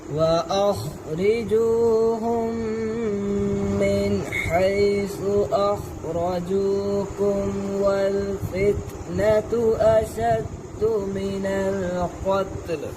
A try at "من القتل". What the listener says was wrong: قتل तापर कलकला ना हो, मिनल क़त्ल.